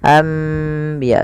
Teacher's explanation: Membalikkan suara nun menjadi suara mim. Awalnya anbiya Allah, karena bertemu dengan ba maka diganti dengan mim, maka dituliskan di atasnya dengan bentuk mim ini agar dibaca anbiya sambil ditahan 2 harokat. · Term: iqlab, iklab